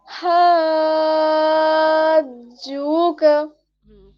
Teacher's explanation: first वाले में थोड़ा सा मतलब फर्स्ट वाले में नहीं, लास्ट वाले का जो हा को जीम में मिलाएंगे तो जीम क्या है, एक हुर्फे कलकला है, तो उसमें थोड़ी सी वॉइस आएगी